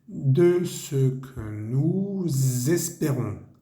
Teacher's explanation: nuestro sujeto nous termina en S. Entonces nuevamente hacemos nuestra liaison, nuestra conexión.